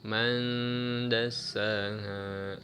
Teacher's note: Nah, ini ikhfa akrab ya. Man baca tidak terlalu dengung, ada nunnya.